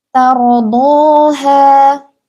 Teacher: Dalam kata tardaha, ro sukunnya ini tebal ya